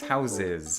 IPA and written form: haᶷsɪz (houses)